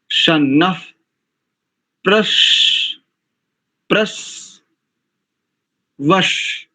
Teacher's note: यहां पर ना के बाद जो विसर्ग है इसको उपध्मानी हो जाएगा, तो शन्नः, जैसे धियो यो नः प्रचोदयात, ऐसे यहां पर शन्नः प्रश, प्रस, वश, ऐसा करेंगे तो शुद्ध आ जाएगा।